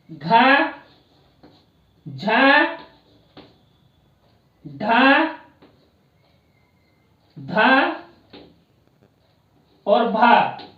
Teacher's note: ये पांचों वर्ण संवार, नाद, घोष और महाप्राण के अंतर्गत बोले जाते हैं।